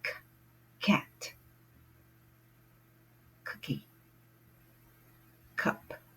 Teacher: The initial sound of these words are K, begin with K sound. You cannot say these words unless you begin to put the sound in the back of your throat.